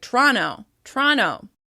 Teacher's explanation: I think they often drop that first schwa sound as well, so it sounds like "Tronno, Tronno.".